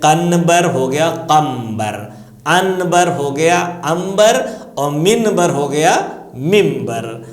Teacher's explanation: اس لیے آ رہی ہے کہ قانون ہے کہ اگر نون ساکن یا تنوین کے بعد حرف بے آتا ہے تو آپ اس نون کو میم میں بدل دیتے ہیں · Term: میم کی آواز